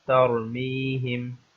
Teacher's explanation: اب یہاں پر بھی را کے اوپر سکون ہے، یا اس کو آپ جزم کہہ سکتے ہیں کہ را کے اوپر جزم ہے اور اس سے پہلے زبر ہے، تو اس لیے اس را کو موٹا پڑھا جائے گا، اس را کو تفخیم کے ساتھ پڑھا جائے گا